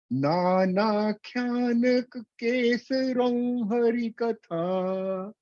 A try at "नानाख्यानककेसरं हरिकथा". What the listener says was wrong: Nak, no, naka. Nānākhyānaka, ka is full. Nānākhyānaka kesaram harikatha.